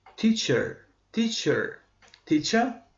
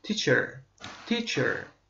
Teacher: Britaniya variantında teacher olacaq. Yəni burada bizim R hərfimiz düşəcək.